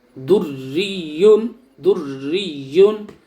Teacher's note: را مشدد پر زیر ہے اس لیے را باریک پڑھی جائے گی